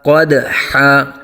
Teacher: دال ساکن میں قلقلہ کریں گے، قلقلہ خوب ظاہر ہوگا۔ قدحا، قدحا نہیں کریں گے بلکہ قاف کو پر آ جائے گا، دال ساکن میں قلقلہ کریں گے اور دو زبر کو الف سے بدل دیں گے۔